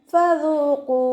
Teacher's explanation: ലൈറ്റാക്കി ഉച്ചരിക്കാൻ ശ്രദ്ധിക്കുക. നമ്മുടെ മേലെ മുൻപല്ലിൻ്റെ അറ്റം താഴെ ചുണ്ടിൻ്റെ ഉൾവശത്ത് നനഞ്ഞ ഭാഗത്ത് വെച്ചിട്ട് ഉച്ചരിക്കുക